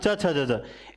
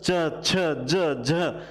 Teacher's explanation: है ही क्योंकि ये स्पर्श में शामिल हो गए लेकिन इनका च छ ज झ जब बोलते हैं उच्चारण करते हैं तो इनमें भी थोड़ा संघर्ष दिखाई देता है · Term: स्पर्श संघर्षी